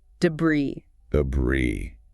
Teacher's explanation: Silent S. Stress on the second syllable.